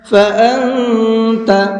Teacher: اس نون کے اندر بھی اخفا کر کے پڑھیں گے اس لیے کہ نون ساکن کے بعد میں تا ہے اور تا بھی اخفا کے حرفوں میں سے ہے، تو یہاں نون کے اندر اخفا کر کے پڑھیں گے، ناک میں آواز کو چھپا کر کے پڑھیں گے۔